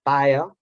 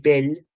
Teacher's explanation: l'oposició entre paia, pronunciat amb iodització, i pell, pronunciat sense iodització